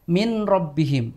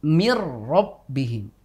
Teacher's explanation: Nun tuh seperti hilang bahkan seperti ro itu menjadi dobel I mirabbihim kita tidak membacanya dengan menyisakan Nun misalkan Min rbihim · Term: Idgham Kamil